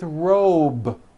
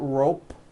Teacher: It's not rope with an unvoiced P. It's robe. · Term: voiced B ending